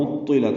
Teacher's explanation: عین وسط حلق سے ادا کریں گے اور طا سے ملائیں گے، طا پر پڑھیں گے